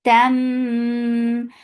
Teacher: This is idgham with gunna, so keep the sound in your nose for a longer time.